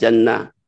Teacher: Di sini tak marbutah ya, tak marbutah ini kalau berhenti menjadi ha ya